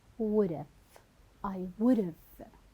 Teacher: you will delete the first consonant sound which is the H sound